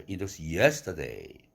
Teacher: 도레미 정도로 발음할 걸 갖다가 파까지 올라가는 거죠